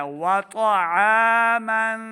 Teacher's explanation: طا زبر طا طا حروف مستعلیہ سے ہے, اس کو ہم نے موٹا پڑھنا ہے. وطعاما آ نہیں پڑھیں گے, عین پڑھنا ہے.